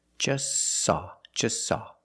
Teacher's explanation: We see the T is between consonants, so don't pronounce it. It's silent. Just saw. You link the S with the S. Link them together.